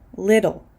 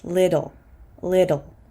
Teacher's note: I'm actually pronouncing this t as a fast D little little because this T is before an l sound or